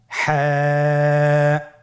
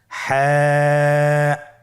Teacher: হা হরফটি উচ্চারিত হবে কন্ঠনালীর মধ্যখান হতে। গলা চিপে ধরে আপনি উচ্চারণ করুন।